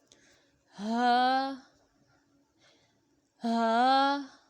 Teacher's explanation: حلق کے آخر سے جو سینے کی طرف ہے اس سے ہا کو ادا کریں گے